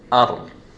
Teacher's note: So instead of saying an, we are saying ar. We are jumping straight from the hamza to the ra. Ar, not an. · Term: idgham without a ghunna